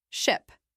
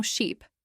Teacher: Try saying them slowly. First, ship short and quick. Now sheep, longer and stretched.